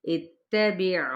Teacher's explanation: حمزہ کی زیر کو تا کے ساتھ ملائیں تاکہ حرکت کو کھینچے نہیں، با کی زیر کو عین کے ساتھ، اس طرح سے وسط حلق سے عین کی ادائیگی ہو ساکن ہونے کی صورت میں۔